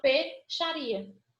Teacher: Em palavras como dinheiro, galinheiro, porque eu não falo peixaria, porque eu não falo I, ó, peixaria. Nesse PEI, o I quase não aparece, aparece o PE.